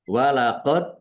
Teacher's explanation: dal sukun bacaan qalqalah dibaca memantul, ditampakkan pantulannya